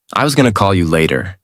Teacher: Notice the changes. Going to becomes gonna. The whole sentence flows more smoothly.